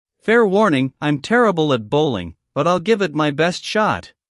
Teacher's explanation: Notice the slight pause after warning.